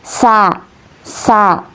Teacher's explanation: huruf sin ini keluar dari ujung lidah yang menempel pada dinding bagian dalam dua gigi seri bawah